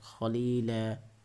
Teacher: যদি ওয়াকফা থাকে তাহলে আমরা এখানে কি করব তাহলে এখানে আমরা তানবিন উচ্চারণ না করে এক আলিফ টানিয়ে পড়বো